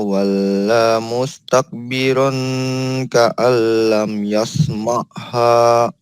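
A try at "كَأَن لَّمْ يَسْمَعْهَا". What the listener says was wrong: Dari ka'allam. Nah, lamnya harus kena ulangi ya. Ka'allam yasma'ha.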